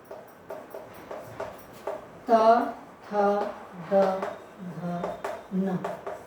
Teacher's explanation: इसका उच्चारण स्थान है बच्चों दंत, यानी दांत।